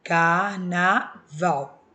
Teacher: Quando eu separo a sílaba, ó, carnaval, eu conto de trás para frente. O val é a minha sílaba tônica. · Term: oxítona